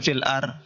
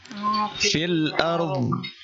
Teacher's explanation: Oh, ditahan di. Ditahan karena dhad itu tidak boleh mantul. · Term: huruf dhad